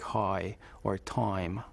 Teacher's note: pronouncing the IE vowel the I sound in a word like high or time um further back in the mouth than other people do so uh it sounds something like hi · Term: the I vowel